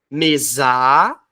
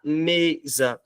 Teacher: a sílaba que mais dura no caso é o me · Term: sílaba tônica